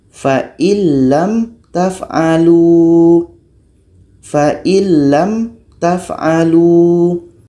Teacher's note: Kalau sudah masuk bunyi nun kepada lam, itu sudah masuk secara sempurna, maka baru disebut dengan idgham kamil.